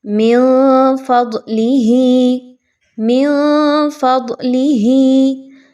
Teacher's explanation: یہاں پر آپ نے نون کی آواز کو مخفی کر کے پڑھنا ہے، اخفا کرنا ہے۔